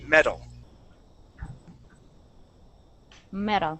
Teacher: that t is going to sound like a d